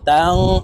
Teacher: নুন সাকিনের পরে ইকফার হরফ জা আসছে, তাই এই নুনকে নাকের ভিতরে লুকাইয়া গুন্নার সহিত পড়ব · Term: ইকফা গুন্না